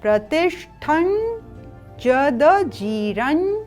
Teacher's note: प्रतिष्ठं यहाँ पर अनुनासिक है तो ठन।